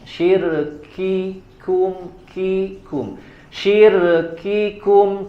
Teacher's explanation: ditahan dulu sampai huruf kafnya sempurna syiddahnya baru keluarkan hamasnya